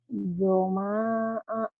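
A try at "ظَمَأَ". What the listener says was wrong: zoma'a, nggak ada panjang.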